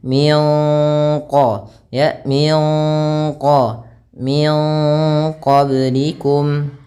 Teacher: tapi kita samarkan ke qaf dan ditahan gunnahnya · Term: ikhfa